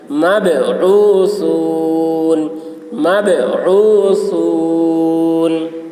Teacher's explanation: با میں قلقلہ، عین حلق سے ادا کریں گے، ثا کی آواز باریک ہوگی